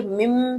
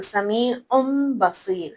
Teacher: नून साकिन और नून तनवीन की पहली सिफत यह है कि हर्फ बा के आने के बाद उनकी आवाज को बदला जाएगा, यानी हम गुनगुनाहट की या नून की आवाज नहीं निकालेंगे बल्कि मीम की आवाज निकालेंगे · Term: कल्ब